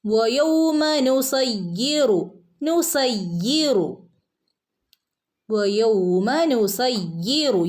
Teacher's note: യാഇന് ശബ്ദമുണ്ട്, യാഇനെ ഒന്ന് കനപ്പിച്ച് ഓതി കൊടുക്കുക. നുസയ്യിറുൽ ജിബാല ബഇന് അലിഫ് മദ് ഉണ്ട്, രണ്ടനക്കം നീട്ടി കൊടുക്കുക കേട്ടോ.